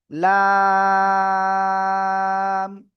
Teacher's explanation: জিহ্বার আগার কিনারা উপরে মাড়ির দাঁতের গোড়ার সাথে, ডান পাশে হতে পারে বাম পাশে হতে পারে, উপরে মাড়ির দাঁতের গোড়ার সাথে লাগিয়ে আমরা এই অক্ষরটা উচ্চারণ করব